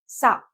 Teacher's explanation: సా అంటే దంతాలు తగులుతాయి కదా, కాబట్టి సా దంతవ్య సా అంటాం